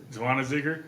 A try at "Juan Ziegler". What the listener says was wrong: Let's say the first Z is silent. Juan Ziegler.